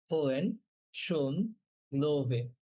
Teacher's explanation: উমলাউটের ও বলার সময় কি বলবো, জিহ্বার অগ্রভাগ তালুর সাথে লাগানো ট্রাই করবো। ওকে, আর মুখটা গোল করে বলবো ও।